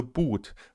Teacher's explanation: hier wird es zwar nicht immer, aber häufig mit langem /u:/ ausgesprochen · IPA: /bu:t/